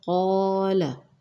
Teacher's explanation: قاف مستعلیہ ہے، کالا نہیں کہنا